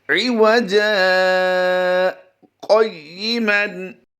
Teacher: ہم نے آواز روک کر درمیان میں ایسے کیا کہ جیسے وقف کر رہے ہیں، لیکن سانس ہم نے توڑا نہیں ہے۔ اسی سانس نہ توڑنے کو سکتہ کہا جاتا ہے۔